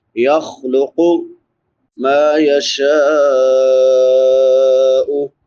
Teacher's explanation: شین کے بعد مد متصل ہے کیونکہ حمزہ اسی کلمہ میں ہے